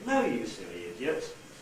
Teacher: the tendency is to start rising at the last stressed syllable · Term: the rising gesture